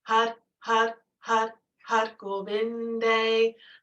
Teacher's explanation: because we're on the R, you're connecting the tip of the tongue to the roof of the mouth, and you're engaging the navel.